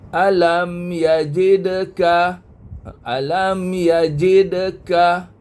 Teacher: tetapi qalqalanya qalqala sughra kecil sebab dia bersambung dia tengah-tengah